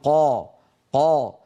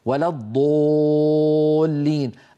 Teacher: عند نطق الحرف المستهلك القاف مثلا الى قبه لما نقول قا نجد بان الصوت يتصعد الى قبه الحنك الى سقف الحلق فيصتدم به ويعود وله رنين يملا الفم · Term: التفخيم